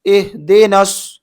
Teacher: حمزہ حاضر اہ، دال زیر دی، اہ دی. نون کو صاد میں ملانا ہے